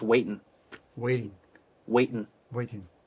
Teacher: try to drop that g sound at the end of waiting. So it's just waiting.